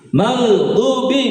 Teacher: hati-hati di ginnya. Jangan tawalud, jangan qalqalah karena gin bukan huruf qalqalah.